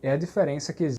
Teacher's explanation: Por exemplo, quando há um D e I e E, instead of saying like G, he says D, right? And that's a nordestino thing.